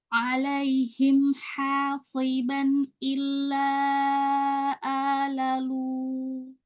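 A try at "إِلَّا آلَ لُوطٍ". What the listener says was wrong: Illa. Ditipiskan lamnya. Illa alalu.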